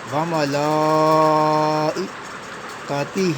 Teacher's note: لام کے اوپر کھڑا زبر ہے، اس کے اوپر مد بھی ہے، لہٰذا ہم نے لام کو کھینچنا ہے